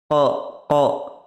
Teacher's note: জিভের গোড়া ও তার বরাবর উপরের তালুর সাথে লাগিয়ে উচ্চারিত হয় 2 নোক্তাওয়ালা কফ